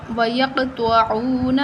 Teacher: قاف ساکن ہے تو یہاں ہم قلقلہ کریں گے کیونکہ یہ حروف قلقلہ ہے.